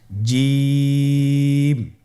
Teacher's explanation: এর মাখরাজ হলো জিহ্বার মধ্যখান তার বরাবর উপরের তালুর সঙ্গে লাগিয়ে উচ্চারিত হয় আপনারা পিকচারে ছবিতে দেখতে পাচ্ছেন যে জিহ্বার মধ্যখান তার বরাবর উপরে তালির সঙ্গে লাগিয়ে উচ্চারণ করতে হয়।